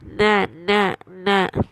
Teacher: But when I close the nose, na, that noon sound is not coming. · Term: gunna